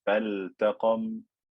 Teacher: the word faltaqam, I don't merge this lam into the ta. I don't say fattaqam, because this lam is not lam shamsiyya.